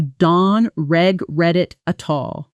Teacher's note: The T sounds almost disappear, blending into something closer to don't regret it at all. This kind of soft, quick T, where it sounds more like a light D, tap between vowels